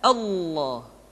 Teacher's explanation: maka lam yang terdapat pada lafal jalalah tersebut mesti ditebalkan Allah kecuali kalau lafadz Allah didahului oleh huruf yang berharakat kasrah